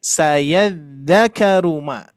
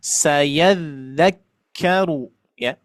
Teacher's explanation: kafnya tidak ditasdidkan padahal harus ditasdidkan